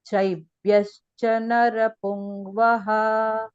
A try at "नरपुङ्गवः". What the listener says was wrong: Pungavaha. Ga is there. Pungvaha cannot come. Vyanjana cannot come. Pungavaha.